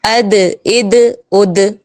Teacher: دال بھی باریک ہے، اس کو باریک ادا کریں گے